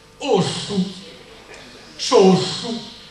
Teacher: viene detta al mio paese, scritta ossu, sossu, con questa S aspirata